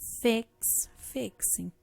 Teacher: Isso aqui é uma questão de fonética, tá? O X, por exemplo, ele termina, o som dele é o KS, é como se fosse duas consoantes, né?